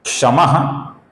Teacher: जब इस प्रकार विसर्ग के आगे क, ख या क्ष आता है, तो विसर्ग का हम हल्का सा ख, अपूर्ण ख ऐसा उच्चारण करते हैं।